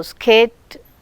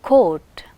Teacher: skate, k is not aspirated, and whereas in coat, k is aspirated. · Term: aspiration